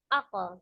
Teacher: huruf qaf sendiri adalah huruf yang tebal, maka pantulannya bukan ak, tapi aq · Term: Qalqalah